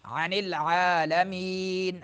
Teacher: اظہار ہوگا کیونکہ تنوین کے بعد حروف حلقی میں سے عین آ رہا ہے